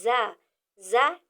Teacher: ऊपर और नीचे के दांतों को मिलाकर या करीब करके जबान की नोक उनके बीच में या नीचे वाले दांतों पर लगती है